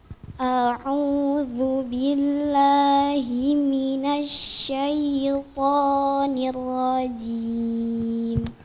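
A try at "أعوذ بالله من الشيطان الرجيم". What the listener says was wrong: Jangan baca ni rajim. Di sini ada dua ra bukan satu. Yang pertama sukun. Kita harus kasih hak ra yang sukun dulu. Nir. Barusan masuk ra fathah. Nir rajim. Gak boleh posisi mulut kita sama. Sukun beda dengan fathah. Nir ini sukun.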